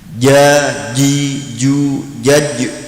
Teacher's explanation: ketujuh Tengah lidah dan tengah langit-langit perutama huruf Jim